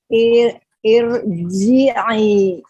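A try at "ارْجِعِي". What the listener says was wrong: Irji'i. Oke, jadi masih PR ya. Jeda di huruf ro-nya, jadi nanti dilatih, ro-nya ditahan, langsung alirkan ke huruf setelahnya. Irha, irham, irji'i.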